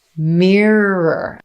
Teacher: Mirror. But our first syllable, we start with the M consonant, lips together, and move into me.